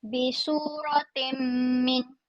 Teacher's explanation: Ta tanwin bawah bertemu dengan mim. Bunyinya dengung. · Tanwin bertemu dengan mim kena dengung. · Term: Idham